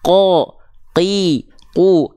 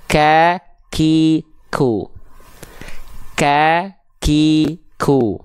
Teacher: kalau Q lebih dalam enggak keluar perecikan nafas kalau Q qo Qi qu kalau Kaf ada percikan-percikan nafasnya ka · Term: huruf qof